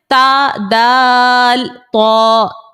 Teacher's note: زبان کی نوک جب سامنے کے دو دانتوں کی جڑوں سے لگے تو تا دال تو نکلتا ہے. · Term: حروف نطعیہ